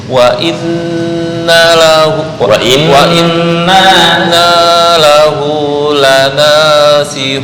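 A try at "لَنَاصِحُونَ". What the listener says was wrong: Ha-nya masih belum. Him, ham, hum, suara lanasihun.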